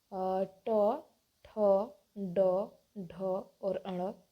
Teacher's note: ट, ठ, ड, ढ और अण। ये जो 5 वर्ण हैं ये ट वर्ग में आएंगे और इनका उच्चारण जो होता है मूर्धा से होता है। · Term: मूर्धन्य व्यंजन